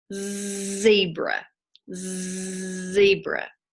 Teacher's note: voice box is turned on or off zebra zebra it's on you can feel your voice box working inside there that's the z sound